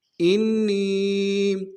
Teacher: نون کے اوپر تشدید زور دیں گے، نون کو یا کے ساتھ ملانا ہے، یا مدہ ایک دال میں کھینچیں گے